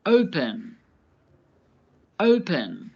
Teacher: The verb open has two syllables. Open. The first syllable is stressed. Open. Stressed means there is more emphasis on that syllable.